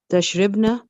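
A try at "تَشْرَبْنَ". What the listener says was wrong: No, Ra should have, no, the Ra should have a fatah. Ra, ribna ne, Ra has a fatah.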